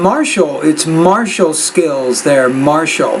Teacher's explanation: That TI is an SH sound.